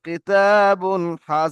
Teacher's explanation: তানবিন নুন সাকিনের আওয়াজ একই রকম। এই তানবিনের পরে হরুফে হালকি ছয়টি অক্ষরের মধ্যে একটি অক্ষর হা এসছে। তাই তানবিনের আওয়াজকে বিনা গুন্নায় তাড়াতাড়ি পড়তে হবে।